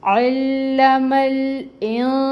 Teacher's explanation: اگر نون ساکن کے بعد حروف اخفا میں سے کوئی حرف آئے تو اخفا کرتے ہیں، نون کی آدھی آواز کو ناک میں چھپاتے ہیں، اور اس کی مقدار ہوتی ہے 2 کاؤنٹس کے برابر